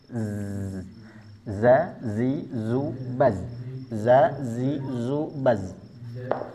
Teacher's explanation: z ini sifat saofirnya. berdesisnya atau seperti suara tawon. · Zai ini memiliki sifat jahr. Ingat jahr artinya tidak ada nafas yang keluar. Jadi ketika mengucapkan huruf zai jangan ada hamesnya karena sifatnya jahar. · Jadi ketika mengucapkan huruf zai, jangan ada hamsnya karena sifatnya jahr. Zazizubaz itu bukan hamas, tapi z ini sifat sofirnya, berdesisnya, atau seperti suara tawon.